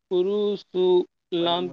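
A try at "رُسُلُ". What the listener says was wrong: রুসু টান হয়ে যাচ্ছে তো, তাড়াতাড়ি পড়েন।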